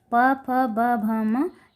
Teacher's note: प, फ, ब, भ, म ये ओष्ठ्य व्यंजन कहलाते हैं। ये ओठ यानी होंठ से स्पर्श होकर बाहर साउंड निकलती है, इसलिए इन्हें ओष्ठ्य व्यंजन कहा गया है।